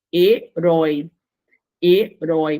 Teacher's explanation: Olha o oi aí, gente. O oi, pronúncia aberta.